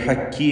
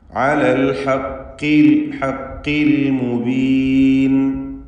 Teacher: അത് ഹക്കി എന്ന് കാഫ് പോലെ ഉച്ചരിക്കരുത്. ഖാഫിൻ്റെ മഖ്റജിൽ നിന്ന് തന്നെ ഉച്ചരിക്കണം. എന്നാൽ കസ്റ ആയതുകൊണ്ട് കുറഞ്ഞ തഫ്ഖീം നൽകി അതിനെ ഉച്ചരിക്കണം.